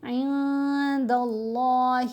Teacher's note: نون کے اوپر احفا کریں گے, نون کی آواز کو ناک میں چھپا کر پڑھیں گے